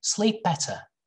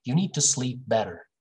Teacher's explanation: British people, they are not going to pronounce this r sound